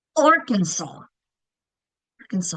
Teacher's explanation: That first syllable is getting the accent.